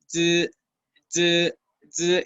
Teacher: la punta de la lengua toca los dientes por la parte de adelante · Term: la Z